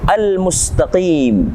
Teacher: Alif Lam Qomariah yang kita baca jelas alif lam nya tidak kita hilangkan